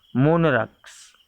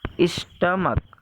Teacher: तो इन दोनों वर्ड्स के लास्ट में CH आया है, बट इनका उच्चारण क हो रहा है